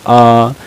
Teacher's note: बड़ा आ जो होता है यह पश्च स्वर होता है